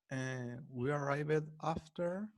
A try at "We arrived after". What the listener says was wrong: Pay attention to the D. We arrived, decided, realized.